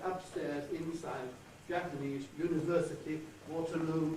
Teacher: here are a number of words that have two full stresses in them. They have an earlier level tone, and second isolation, and then a falling tone for the second.